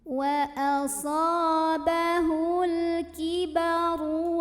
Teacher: Maka ra-nya tebal. Cara menebalkannya adalah dengan mengangkat pangkal lidah kita. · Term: tafkhim